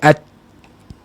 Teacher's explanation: Betul. Sebab huruf ta ni sifat bahagian suara syiddah. Suara tertahan. Jangan orang nak baca huruf ta ni suara berlalu.